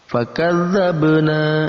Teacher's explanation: Lalu kemudian ada ba yang berharokat sukun, juga sama menjadi huruf qalqalah. Kita pantulkan huruf ba yang berharokat sukun.